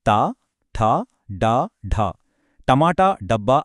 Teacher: మూర్ధన్యాలు నాలుక వెనక్కి మడిచి పలికే సౌండ్స్ ఇవి